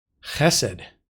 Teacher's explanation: note the accent on the first syllable